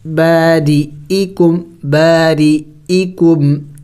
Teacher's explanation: یہاں پہ را کے نیچے زیر ہے تو اس کو باریک پڑھیں گے